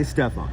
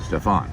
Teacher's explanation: I put the accent on or the stress on the first syllable so and everybody else puts it on the second one Stefan